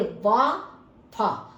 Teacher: वा में दांत नीचे के होठ से टकराए, ऐसे ही फा ये अरबी फारसी का शब्द है, तो इसमें भी आपका दांत नीचे के होठ से टकराया, तो इसलिए ये आपके दंतोष्ठ्य का मतलब आता है कि दांत और होठ दोनों। · दंतोष्ठ्य, दंतोष्ठ्य का मतलब क्या होता है, ऊपरी दांत और निचले होठ, इन दोनों का प्रयोग होता है। मतलब ऊपर के दांत और नीचे का होठ।